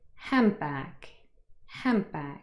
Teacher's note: This is a nasal sound, a consonant, but the N changes into another nasal, but it's different in the way it is produced. You can see my mouth is open. · the D in hand is dropped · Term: elision